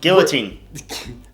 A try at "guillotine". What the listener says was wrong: I don't think, you say the L.